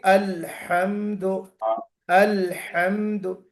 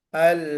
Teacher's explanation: हा की आवाज थोड़ी मोटी आएगी, बट वो जो छोटी हा है उसकी आवाज थोड़ी सी बारीक आएगी। छोटी हा की आवाज बारीक होगी, है अल है ना।